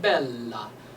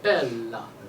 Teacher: when you have two L's, you pronounce both of them. So you close to the L, and then you explode the L on the next one. So we get bella. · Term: double consonants